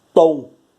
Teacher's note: O tom é o mais forte. E ele é a penúltima. E para ele ser a penúltima, ele vai ser uma paroxítona, porque a última é o bo, que foi a última que eu escrevi.